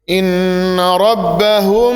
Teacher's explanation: nun gunnah itu ditahan dulu 2 harokat · Inna rabbahum itu juga ikhfa syafawi mim ketemu sama ba ditahan dulu dengung.